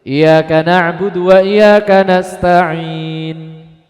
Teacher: pertama menghilangkan tasdid jadi dibaca tasdidnya hilang